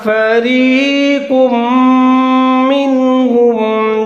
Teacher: وقد كان فريق، قاف اس کے اوپر تنوین دو پیش ہے، قاف کو موٹا کر کے آگے میم مشدد ہے اس کے ساتھ ملا کر پڑھیں گے، ادغام کریں گے جہاں پر بھی غنّے کے ساتھ